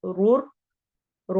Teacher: غفور رحیم، غفو واو مدہ، رور، رو دونوں موٹی پڑھی جائیں گی